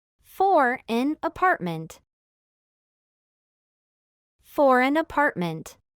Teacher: un ejemplo de enlace, con la consonante R y con la consonante N